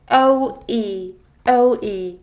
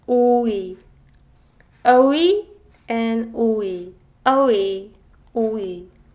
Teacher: You can definitely feel that the Korean version is less flexible and each vowel has its distinct and clear-cut sound. It doesn't flow, it just cuts.